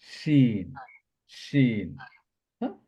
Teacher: Originate when the centre of the tongue touches the upper প্যালেট জিহ্বার মধ্যখানটা তার বরাবর উপরে তালুর সাথে লাগিয়ে আমরা প্রোনাউন্স করব · শিন originate when the center of the tongue touches the upper palate. জিহ্বার মধ্যখানটা তার বরাবর উপরে তালুর সাথে লাগিয়ে আমরা প্রোনাউন্স করব শিন, শিন।